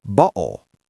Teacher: in some British accents, they use a glottal stop. That is when you stop the air in your throat. · The T sound disappears.